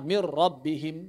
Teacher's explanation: Cukup ucapkan takrir (trill) dari 'ra', "mir rabbihim".